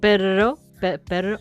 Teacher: the sound is the trilled R as in Italian or Spanish.